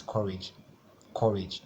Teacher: courage is two syllable so the stress will be on the first syllable so this core part will be the stressed syllable so the